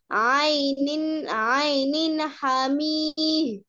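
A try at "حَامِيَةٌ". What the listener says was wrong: হামি ইয়ে, তাসদিদ যুক্ত হরফকে দুইবার পড়তে হয়, তাহলে কি বলতে হবে? হামি ইয়ে। এখানে তো তাসদিদ যুক্ত ইয়ে আছে।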